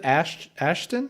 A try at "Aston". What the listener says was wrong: Aston, without the H.